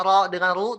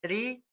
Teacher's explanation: Ro pangkal lidahnya naik. Tapi kalau ro tipis tidak mengangkat pangkal lidah.